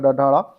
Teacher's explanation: सघोष होता है। यह व्यंजन जो दिया गया है ड और अल्पप्राण होता है और यह मूर्धा व्यंजन में आता है